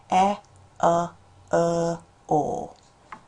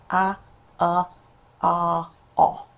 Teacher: And your finger should go back into your mouth. It's your tongue will go backwards as you're going through these sounds.